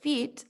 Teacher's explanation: If we are producing the phoneme I or E in the word feet, the tongue is at a front high position